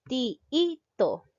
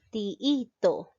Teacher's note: Entonces me doy cuenta que la mayor fuerza de voz recae en la sílaba i